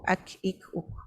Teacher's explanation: Okey, dia syiddah. Bila mati dia mati mengejut. Tapi yang terkeluar di hujung itu adalah angin. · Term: huruf kaf